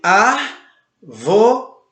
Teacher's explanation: ela tem a sua antepenúltima sílaba acentuada, ou seja, a letra A é acentuada. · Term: proparoxítona